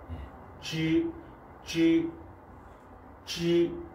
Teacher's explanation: 쯔는 혀를 가장 안쪽으로 말아서 이 여린 입천장에까지 가야 됩니다. 가장 이제 혀를 많이 마는 거죠.